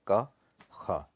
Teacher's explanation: तो कंठ ध्वनियाँ किसको बोलते हैं हम लोग? जो कंठ से बोली जाती है, यानी गले से जिनका प्रोनाउंसिएशन होता है